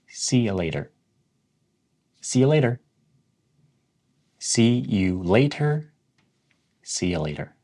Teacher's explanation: the T in later is almost pronounced as a D